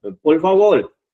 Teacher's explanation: no pronuncian la R